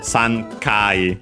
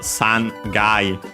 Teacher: there can be voicing of the consonant of the counter